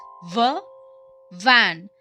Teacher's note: Same as F but use your voice too.